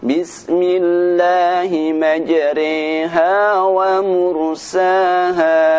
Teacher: imalah yaitu membaca bacaan ro dibaca dengan bunyi Rey